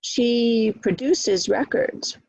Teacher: Produces is second syllable, so that's a verb.